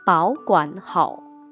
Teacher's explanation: 这三个字都是第三声，但是由于前面两个字是主要的词语保管，所以呢，我们就把前面两个字换成第二声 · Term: 变调